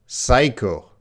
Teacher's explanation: Well, that P is silent.